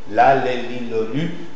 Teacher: Liquide, latérale, dentale, sonore.